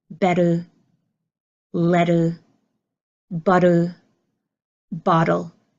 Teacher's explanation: We don't push out a strong T. You hear the sound of D.